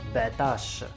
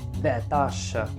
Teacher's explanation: a lot of people in some regions of Morocco, they would remove the R sound and they just say batash